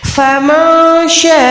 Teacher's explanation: شاہ کو 4 سے 5 سیکنڈ لمبا کریں گے بڑی مد کی وجہ سے